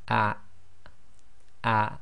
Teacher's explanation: the hamza acts as the glottal stop in Arabic, and you should feel a slight blocking of the bottom of your throat